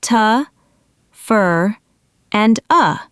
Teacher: The words to for and of are reduced to simple unstressed sounds t for and uh your brain is listening for to and of but it only hears t and uh so it misses the word completely even though you know it. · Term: reductions